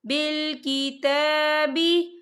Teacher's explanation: बिल की ता के ऊपर खड़ी हरकत है, तो हम इसे 2 या 3 हरकत के बराबर खींचेंगे